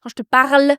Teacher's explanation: c'est presque comme si je faisais un H dans parle un H fort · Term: R assez doux